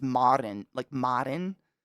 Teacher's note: Technically, the Finnish pronunciation is Marin, like Marin, with the rolling R